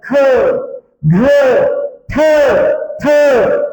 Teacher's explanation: ठ म्हणजे ज्यांचा उच्चार करताना हवा मोठ्या प्रमाणात टेकली जाते आणि त्यांचा उच्चार ह या वर्णासोबत केला जातो त्याला म्हणतात महाप्राण व्यंजन